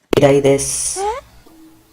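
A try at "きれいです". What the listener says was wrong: You should have said きれい. Kirei, beautiful. Kirai, dislike, hate.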